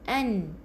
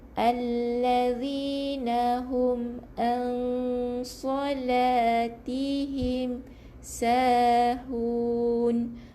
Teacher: Jangan bunyikan nun. Jadi ada sengau bunyi. 2 harakat dengung. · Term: ifa'